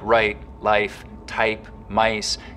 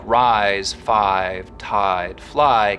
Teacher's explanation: the starting point of words like write life type mice can get raised too but words like rise five tied fly keep their full eye diphthong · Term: canadian raising